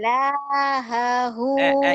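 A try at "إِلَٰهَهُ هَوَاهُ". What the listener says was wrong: I-nya mana? Kok lahahu? Ila, I-nya mana? Ilahahu hawahu.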